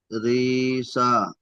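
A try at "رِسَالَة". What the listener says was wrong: রিসা নয়, রি টান হবে না। চিন খাওয়া দেওয়া সা, ওখানে টান হবে একালি পরিমাণ, তাহলে রিসা।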